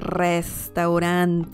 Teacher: you really have to roll your r right there